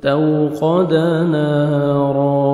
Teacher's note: الف مدہ 1 سیکنڈ آپ نے نون کو کھینچنا ہے